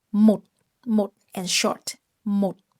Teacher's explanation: Một has a heavy dot tone, dấu nặng. So you drop your voice quickly.